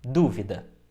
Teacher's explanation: A sílaba mais forte é de fato o du.